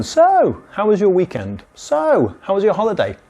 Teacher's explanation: we prefer to introduce this question with so, with a little bit of high intonation to break the silence, to not sound so direct in English.